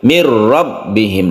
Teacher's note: yang mu ya adalah idgham bilagunnah ini Nun bertemu dengan Raid idgham bilagunnah bilagunnah itu tanpa berdengung ya jadi langsung tidak perlu dipanjangkan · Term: idgham bila guna